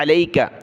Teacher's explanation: آیت نمبر 5 دیکھیں، اِنَّا سَنُلْقِي عَلَيْكَ، اِنَّا سَنُلْقِي، قاف یا زیر قی، قاف کو موٹا کیا، سنل، سین زبر سا، نون لام پیش نل، سنلقی، علیک، یہ باریک کاف ہے، عین کو گلے سے نکالا